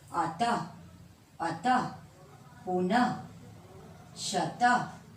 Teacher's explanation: विसर्ग का उच्चारण जो होता है वो अह के रूप में होता है और इसका उच्चारण ह के स्थान पर होता है, और ये प्रायः शब्द के अंत में लगाया जाता है।